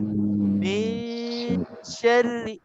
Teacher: Maknanya kita dah sembunyikan nun ke dalam huruf shin. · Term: ikhfa